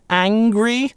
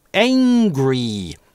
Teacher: американцы реализуют этот звук перед [ŋ] как [eɪ], angry. А в конце слово у нас может быть только /iː/ в американском английском.